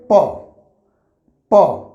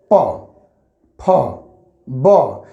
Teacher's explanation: जब भी हम प फ ब बोल रहे हैं तो हमारी ओठ जो है एक दूसरे से क्या हो रही है सट रही